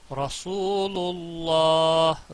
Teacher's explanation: محمد الرسول اللہ, تو یہاں پر دیکھیں واو ساکن ہے اور اس کے پچھلے حرف پر پیش ہے, جو قاعدہ آپ نے یہاں پڑھ پڑا حروف مد واو مدہ, تو یہاں پر ہے رسول دو الف کے برابر اس کو کھینچنا ہے اللہ, اس میں جلالہ کا نام موٹا پڑا جائے گا